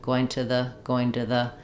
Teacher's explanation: my U of two becomes an a this is an exception where we use a true U here